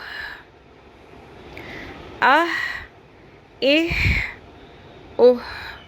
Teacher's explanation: حمزہ پیش ح اوہ، اح اح اوہ. ہلکی سی جو سانس کی آواز ہے، جو حلق کے وسط میں سے جب ہم ح ادا کریں گے تو یہ آنی چاہیے، ٹھیک ہے. اس کو ہا نہیں پڑھنا.